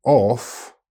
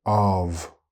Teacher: One has a strong F sound and the other has a strong V sound. Notice also that the vowel sounds are different.